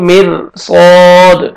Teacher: را ساکن سے پہلے زیر ہے را کو باریک پڑھیں گے